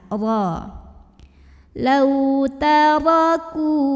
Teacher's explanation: Huruf ra dibunyikan secara tafkhim karena ra-nya ini berbaris fathah. Cara membacanya cukup kita tebalkan ya. Jadi pangkal lidah kita diangkat.